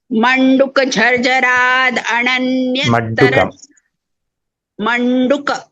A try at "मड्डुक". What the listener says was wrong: it is not manduka madduka madduka झर्झराद मड्डुक झर्झरादण्य